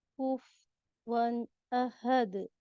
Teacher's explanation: آپ نے فا کا پیش ایسا لگا مجھے پڑھا ہی نہیں، کف ون سنائی دیا مجھے